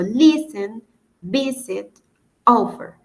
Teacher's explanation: el golpe al momento de pronunciarlo, la fuerza que se emite cuando se pronuncia está al inicio y no al final. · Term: acentuación